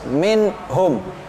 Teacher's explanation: hukumnya nun sukun Kemudian bertemu dengan huruf H hurufnya izhar jadi bacanya harus jelas